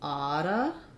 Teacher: we typically link these together only make one t and um we reduce the the ooh to a schwa so